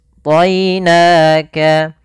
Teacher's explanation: kita baca dengan bacaan Lin yaitu lembut dalam pelafalannya dan tidak boleh ditebalkan